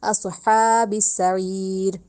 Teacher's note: سعیر ہی رکھنا ہے، اور لیکن ہا حلق سے نکالنا ہے، اور سعیر کا عین حلق سے نکالنا ہے ، سعیر نہیں کہنا، اس عین کو الف کی ادائیگی نہیں · نہیں دینی، اس کو صاد کو سین کی ساؤنڈ نہیں دینی، صاد کو موٹا کر کے پڑھنا ہے، اور ہا کو حلق سے ہی نکالنا ہے ، ہاتھی والا ہا نہیں بنانا، اسہا نہیں کہنا، اصحاب السعیر،